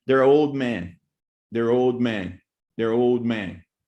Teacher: you have the bilabial sound, and you actually don't pronounce the D anymore.